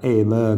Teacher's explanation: solo la E finale evanescente